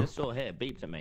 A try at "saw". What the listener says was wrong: That, oh, wait, you are saying saw, but you're saying it, But it sounds like sword.